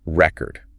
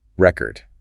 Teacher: if you stress the first syllable, record, that's the noun